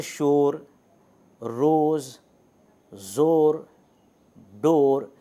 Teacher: تو ان چاروں مثالوں میں آپ دیکھیں کہ اور کی جو او کی آواز ہے واو کی, لانگ واول کی, وہ ادا ہو رہی ہے